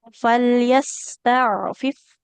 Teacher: untuk lam dengan ain dia tawasud. Aliran suaranya pertengahan lebih sebentar.